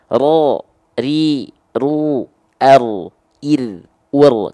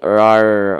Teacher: Kedengeran nggak getarannya dia nggak hilang. Getarannya nggak boleh hilang. Ya, jangan jadi rar.